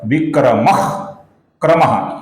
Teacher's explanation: हमने पिछले एक श्लोक में देखा था, जब विसर्ग के आगे क आता है दोस्तों तो विसर्ग का हम हल्का सा ख इस प्रकार उच्चारण करते हैं